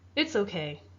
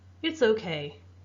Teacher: My voice went down, and you can really hear that I am not happy when I'm saying that sentence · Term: intonation